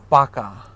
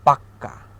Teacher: কখনো কখনো জোর দেওয়ার জন্য শব্দের অন্তর্গত ব্যঞ্জনের দ্বিত্ব উচ্চারণ হয় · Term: ব্যঞ্জন দ্বিত্ব